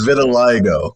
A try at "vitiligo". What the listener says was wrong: It's not vitiligo. It's vitiligo. There's a whole other vowel in it. Vitiligo.